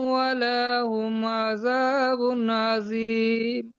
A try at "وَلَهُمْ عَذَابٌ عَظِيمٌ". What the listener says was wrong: ওয়ালাহুম, ওয়ালাটা একটু টান হয়ে গেছে, আর আজিমটা আজিম হবে না, ওটা একটু খেয়াল রাখবেন। ওয়ালাহুম আযাবুন আযীম, পুর করে, ওয়ালাহুম আযাবুন আযীম।